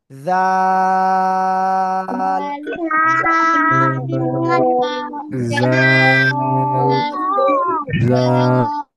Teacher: জিব্বার আগা উপরে দুই দাঁতের আগায় লাগাবেন, লাগিয়ে নরম করে তিন আলিফ টানে উচ্চারণ করতে হবে